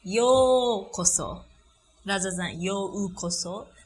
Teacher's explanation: We don't pronounce yo-u-koso, but yokoso, it's a long vowel. So you don't really pronounce u sound, but more like you make yo sound longer.